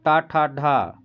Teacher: और टा, ठा, ढा, हमारा जीभ मुड़ रहा है साथियों, इसलिए इसको मूर्धन्य बोला जाता है।